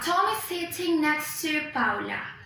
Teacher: So I'm going to say something like Tom is sitting next to Paula. Paula, the word Paula starts with a consonant sound, which is pa. So I'm going to use this form, ta plus schwa.